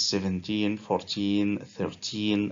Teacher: the stress is on the last part when it is 17 14 13 and so on